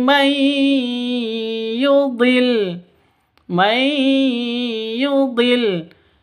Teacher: cara bacanya masuk ke ya disertai dengung karena idgham bighun bighunah. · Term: idgham bighunah